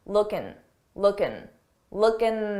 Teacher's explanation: common to take a word that ends in in G and drop the G sound that g sound and just end it on n